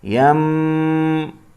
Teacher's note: یہاں پر اقلاب ہوگا کیونکہ نون ساکن کے بعد با آیا ہے تو نون کو میم میں بدلیں گے، اس لیے چھوٹا سا میم یہاں لکھا ہے. اقلاب معنی بدلنا، نون کو میم میں بدلیں گے. یم پڑھیں گے اور غنہ بھی کریں گے.